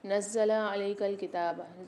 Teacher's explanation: زا کے اوپر مشدد ہے، نون کو زا کے ساتھ ملا کے سختی اور جماؤں کے ساتھ پڑھیں گے